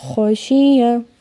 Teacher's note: خو کو موٹا پڑھنا ہے اور یا کو بالکل لمبا نہیں کرنا